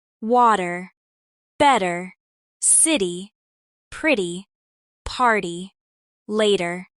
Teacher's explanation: It's called the flap t and it makes American English smoother